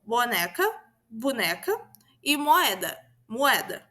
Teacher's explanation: a vogal O, quando antecedida por um M ou um B, vai sofrer uma redução, como boneca, boneca e moeda, pois as consoantes B e M são bilabiais, o que está relacionado com o movimento que fazemos com a boca.